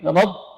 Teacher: ra huruf takrir, rab, maksimal getarannya 2